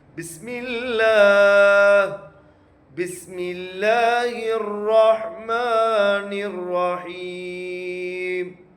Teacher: அந்த அல்லாஹ்வுடைய ஹாவுக்கு வந்து கனமா ஹா சொல்லணும்